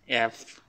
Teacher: হ্যাঁ, এফ কীভাবে উচ্চারণ করে আমরা সবাই মোটামুটি জানি, যে উপরের দাঁতগুলো হচ্ছে নিচের ঠোঁটে লাগাবেন, দেন উচ্চারণ করবেন এফ। এফ যেভাবে উচ্চারণ করে এইভাবে উচ্চারণ করবেন।